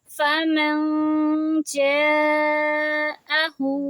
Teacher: اپنی زبان اوپر نہیں لگائیں گے کیونکہ ہم نے اخفا کرنا ہے، نون کی آواز کو چھپانا ہے